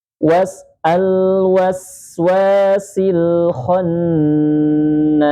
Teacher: Ditahan dulu nun bertasydidnya gunahnya ditahan dulu. · ditahan dulu nun bertasydidnya, gunnahnya ditahan dulu. Was al-waswasil khannas, kemudian na itu panjangnya sama, yaitu ketika kita membaca 2 maka setelahnya 2, kalau 4 4, kalau 6 6. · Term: nun yang bertasydid